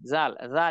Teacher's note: জাল আছে না, জাল হরফ, এই যে জাল, জাল জাল এটা পাতলা করে না, জিহ্বার আগা সামনের উপরে দুইটা আগার সঙ্গে লাগে জাল